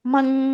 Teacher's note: ন উচ্চারণটা হবে না, অনুস্বার উচ্চারণ হবে